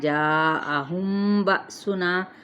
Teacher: زال پہ نرمی کے ساتھ، جاءہم بأسنا 4 حرکت کھینچتے ہوئے، میم ساکن کے بعد با ہے، اخفاء شفوی ، یہاں پہ با پہ جھٹکا دیا جائے گا، نا پہ